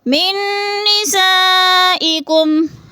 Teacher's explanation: حروف مدہ کے بعد حمزہ اسی کلمے میں آ گیا، یعنی ایک ہی کلمے میں ہے، تو مد متصل 4 الفی مد ہے، اس کو 4 الف کے برابر ہم نے کھینچ کر پڑھنا ہے۔